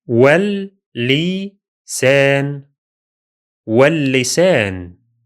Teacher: The lam of al is silent in the last case, while the lam at the beginning of the word is doubled.